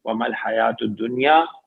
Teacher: ومل حیات الدنیا میں یا پہ کھڑا زبر ہے، 2 حرکات ہیں، پھر آخر میں یا مدہ ہے یہاں پہ دنیا میں بھی.